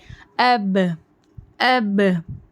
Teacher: حمزہ با زیبر اب، با پڑھ رہے ہیں تو دونوں ہونٹ مل رہے ہیں ہمارے